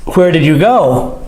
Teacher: notice with the question the voice goes up